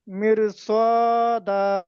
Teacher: রটাকে পুর করে পড়তে হবে রটাকে পুর অর্থাৎ মুখটাকে গোল করতে হবে শুধু বললে হবে না মুখটাকে গোল করে দেখাতে হবে মির সদা